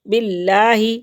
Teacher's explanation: اللہ کے نام سے پہلے لفظ کے نیچے زیر ہے تو یہاں پہ باریک پڑھیں گے، اللہ کے نام کو پر نہیں پڑھیں گے۔